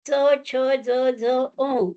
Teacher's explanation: तालव्य, टाळूला त्याचा स्पर्श होतो आणि उच्चार होतो